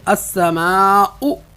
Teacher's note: اور حمزہ بھی ایسے ہی، السماء، حلق کے آخر یعنی سینے سے ادا کریں گے